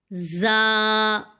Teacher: ہم نے اوپر نیچے کے دانتوں کو تقریباً ملا دینا ہے اور پیچھے سے اپنی زبان کو زور دینا ہے تاکہ سیٹی ایک باہر نکلے۔